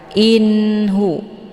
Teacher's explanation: nunnya dibunyikan secara jelas atau jelas bunyi n-nya cukup ditekan saja tidak perlu ditahan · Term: izhar Hakiki